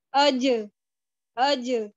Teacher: جیم پہ میں نے اپنی آواز کو تھوڑا باؤنس بھی کیا اور میں نے اپنی آواز کو اٹھایا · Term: جہر کی صفت